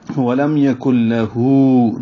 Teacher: لام زبر لا جلدی سے پڑھیں گے، اور ہو الٹا پیش ہے، 2 حرکات لمبا کریں گے، مد صلہ ہے. الٹا پیش ہے وہ مدہ کا قائم مقام ہے، لیکن الٹا پیش کو مد صلہ کہتے ہیں.